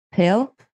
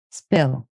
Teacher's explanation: get to the p i have less air to release and the p becomes closer to a b it's less airy